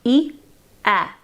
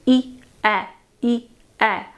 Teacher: Now pronounce just the vowels of these two words, e, a. Notice that as you go from the vowel of e to the vowel of a, your mouth opens.